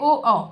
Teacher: ओ और औ का उच्चारण हम कंठ और ओष्ठ से करते हैं। ओ औ करने में ओष्ठ का प्रयोग उपयोग होता है। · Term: कंठोष्ठ